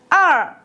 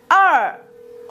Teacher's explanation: đọc âm ơ, sau đó chúng ta cong lưỡi lên nhá, nó sẽ ra âm này ơr. Đấy, chúng ta lật cái lưỡi lên ơr, nó sẽ ra âm này.